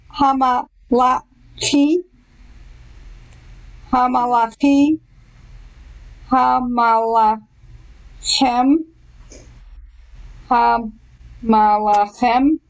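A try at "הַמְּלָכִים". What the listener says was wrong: Remember, there's no vowel under the little M sound. So it's hum, hum, hum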